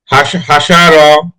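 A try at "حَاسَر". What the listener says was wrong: হাটা একটু সুন্দর হবে হাসার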